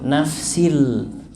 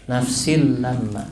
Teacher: karena tanwin dimasukkan kepada huruf setelahnya yaitu huruf lam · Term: Idgham